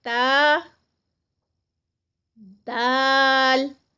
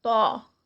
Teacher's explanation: تا اور دال جو ہیں یہ لائٹ لیٹرز ہیں اور طا جو ہے یہ موٹا ادا کیا جاتا ہے. اور اس میں زبان کی نوک اوپر کا حصہ اور اوپر کے سامنے والے 2 دانتوں کی جڑ آپس میں ملتی ہے اور اس طرح سے یہ جو لیٹرز ہیں یہ ادا ہوتے ہیں.